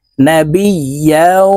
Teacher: ইয়া ওয়াও দুই জবর ইয়াও, এই ইয়া ওয়ার সাথে গুন্নার সহিত মিলাইয়া পড়তে হবে